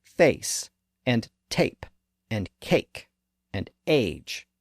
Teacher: the vowel sound that's slightly lower and located next to the e sound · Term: a sound